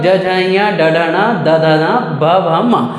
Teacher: इसके अलावा प्रत्येक वर्ग का अंतिम 3 वर्ण कहने का मतलब ज झ ञ ड ढ ण द ध न भ भ म, तो इनके उच्चारण में हमारे स्वर तंत्रियों में क्या होता है, कंपन होता है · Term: घोष ध्वनि